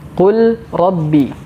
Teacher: huruf lam sukun ini dimasukkan ke dalam huruf ro otomatis huruf lam ini menyesuaikan dengan huruf ro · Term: Idam, idgham